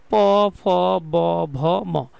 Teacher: তোমার কোন ক্ষমতাই নাই যে ঠোট দুইটাকে ফাঁকা করে এগুলোকে উচ্চারণ করার। তাই এইগুলো উচ্চারণের জন্য অষ্ট বা ঠোটের প্রয়োজন পড়ে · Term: অষ্টবর্ণ